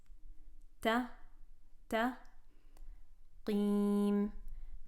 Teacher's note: we have a heavy qaf right after a ta. Make sure that heaviness of the qaf does not color the lightness of the ta.